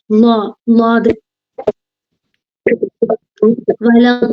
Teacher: നാവിന്റെ ബാക്ക് ഭാഗം നമ്മളെ കോട്ടുപല്ലിന്റെ അവിടേക്ക് തട്ടുക, അപ്പോൾ വരുന്നതാണ് ലോ